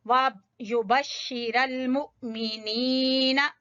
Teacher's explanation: के ऊपर हमजा के ऊपर, वाव के ऊपर हमजा है, फिर हमजा के ऊपर जज़म है तो यहाँ झटका देंगे